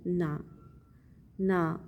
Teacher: न अर्गला का अ और न का मिलकर दीर्घ स्वर हो गया है